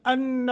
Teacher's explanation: انہ غنہ کریں گے نون مشدد